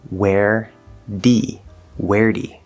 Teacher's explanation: now this d actually turns into more of a flapped or tapped d